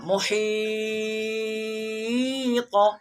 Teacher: یہاں پہ ہم مد کریں گے وقف کے ساتھ، یعنی حروف مدہ یا ہے، حروف مدہ کے بعد سکون یعنی ساکن ہو رہا ہے